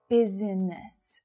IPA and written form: 'bi zi nəs (Business)